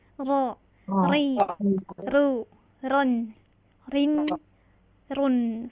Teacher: walaupun dia memiliki sifat takrir bergetar tapi tidak berlebihan